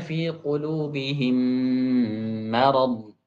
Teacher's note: Kalau mim bertemu dengan mim ada ghunahnya.